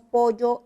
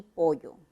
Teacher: A ver, en primer lugar tenemos aquí un cambio por el modo de articulación. El primero es un fonema fricativo, ¿no es cierto? En cambio la elle es un fonema lateral.